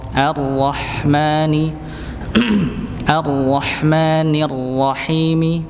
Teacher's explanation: ra-nya ditebalkan, haknya nampak.